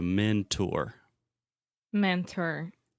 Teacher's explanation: So with the word mentor, the last sound is or. So this is an R vowel, an R colored vowel.